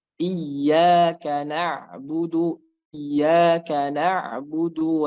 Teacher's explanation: Kemudian ainnya, ain di sini dia sukun. Maka ain sukun di sini harus ada perpindahannya sedikit, jedanya sedikit antara ain dengan ba.